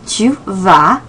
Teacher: where that S is silent on the end